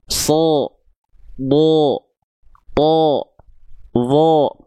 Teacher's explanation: Kenapa dia terdengar seperti vokal O bukan vokal clear A? Karena dia huruf tebal.